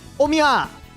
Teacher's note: once Yajirobe goes into full-on Nagoya dialect mode, he pronounces omae as omiya